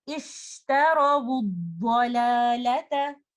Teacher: And then letter lam and letter ta are light letters.